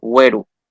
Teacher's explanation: Bueno, güerú, esta sería el acento tónico, porque esta palabra en su forma original no tiene tilde, güerú. Pronunciamos la última vocal con mayor fuerza de voz